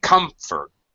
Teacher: However, this is a little bit of an exception because we say comfort, and the second syllable is definitely an unstressed vowel sound and an unstressed syllable